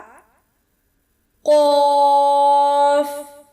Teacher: کوے کے متصل زبان کی جڑ بالمقابل اوپر تالو یعنی یوویلا سے لگنے سے ادا ہوگا